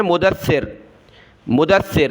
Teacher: دال کو سخت نہیں کرتے، سا کو سخت کرتے ہیں